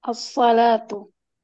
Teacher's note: Alif lamnya enggak dibaca langsung dilebur ke sin. Kalau mau dipaksa dibaca alif lamnya agak sulit diisan.